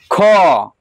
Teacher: खो किसको स्पर्श कर रहा है, तो कंठ को स्पर्श कर रहा है